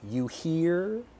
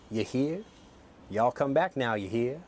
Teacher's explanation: I pronounce my R very, very strongly. You hear? But a person in the South in America would say, you hear?